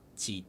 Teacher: Zheet is a very low level tone. It's, I believe, the sixth tone, so it's the lowest of the six tones